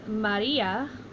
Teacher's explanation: we see that the accent is on the second to last syllable